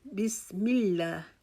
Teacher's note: با کی زیر کو لمبا نہیں کرنا اور سین کو باریک پڑھنا ہے